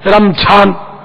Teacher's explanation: ज़्वाद को वही झा पढ़ते हैं, रमझान रमज़ान।